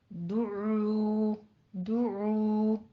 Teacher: عین وسط حلق سے ادا کرنا ہے